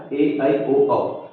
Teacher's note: ए का उच्चारण करते समय आपको इ की ध्वनि आएगी अगर आप ध्यान से सुनोगे